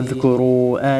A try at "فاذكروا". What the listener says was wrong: فاذكروا مكتوب مو أذكر فاذكروا مكتوب.